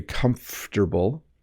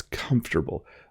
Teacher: the M and F slide together very comfortable and you don't over pronounce every syllable